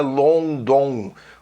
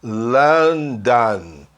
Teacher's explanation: Os americanos gostam de falar esse O-N com som an.